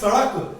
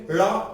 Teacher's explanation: ड़ा में जीभ ऊपर जाएगी, मूर्धा पे बोलिए ड़ा। जब आप ड़ा बोलेंगे ऊपर जाने के बाद जीभ नीचे से खटक जैसे गिरेगी। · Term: उत्क्षेपित व्यंजन